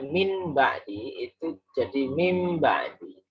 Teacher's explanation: Tanwin atau nun sukun bertemu ba itu namanya iklab. Tapi bacanya tetap dengung.